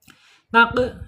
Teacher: Taq ya qop ya mempunyai sifat qalqalah. Qalqalah harus mantul ya. Qalqalahnya qalqalah sugra ya.